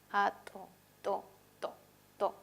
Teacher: Se cierra, toca por completo el órgano. Es oclusivo, dental, porque el ápice de la lengua o la zona de la punta de la lengua toca los dientes superiores, los incisivos superiores. Y además es sordo.